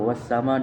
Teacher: Mad wajib mutasil karena di sini ada mad tabi'i bertemu dengan ain dalam satu kata atau kalimat. Cara membacanya panjang 5 harokat. · Al-Samsiyah karena ada huruf al bertemu dengan huruf sin. Cara membacanya dimasukkan.